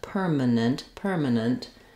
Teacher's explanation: in the word permanent we have the stress on the first syllable per and we have a strong r a clear IR vowel in that syllable